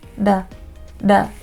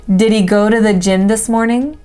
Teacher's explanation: And then the next weak pronunciation is d. It's kind of like your tongue flaps up in a very light D sound.